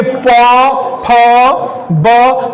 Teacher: उ देखिए, आप बोलिए प फ ब, सब में दोनों ओठ चिपकते हैं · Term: ओष्ठ